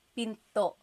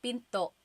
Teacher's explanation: Do you hear the glottal stop when I say pinto? Pinto. So it's not pinto.